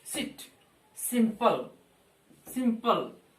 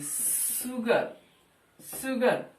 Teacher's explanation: एक तो दंत स, एक तालव्य स